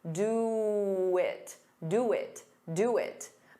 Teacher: To get rid of that pause, you can add a very soft W.